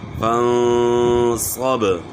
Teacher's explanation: فَانصَبْ، یہاں بھی اخفاء کرنا ہے، غنہ جو ہے اخفاء کے ساتھ کرنا ہے، فَانصَبْ، اور صاد موٹا کرنا ہے، اور با میں قلقلہ ہوگا